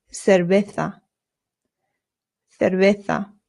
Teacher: So this is and the v's in Spanish make a very light b sound nota. Your lips just touch very lightly when you make the v sound. · Remember the C's in Spanish make a th sound but the zeds do as well.